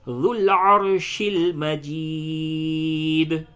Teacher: تو عین پہ زبر ہے تو اس را کو پڑ پڑھیں گے